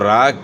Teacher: را موٹی پڑھی جائے گی کیونکہ را کے اوپر پیش ہے